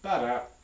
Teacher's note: There's an apical tap, or a tongue tip tap